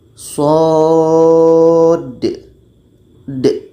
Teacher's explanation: Kalau kita baca shod. Kenapa ada bunyi qalqalah? Karena ada dal mati di ujungnya. Maka dibaca dengan qalqalah.